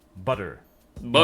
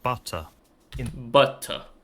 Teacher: In British English, and again, I must emphasize that I'm talking about the accent referred to as received pronunciation, T sounds are pronounced as hard Ts, in other words, voiceless T sounds. In the US, they sometimes sound like D, an alveolar tap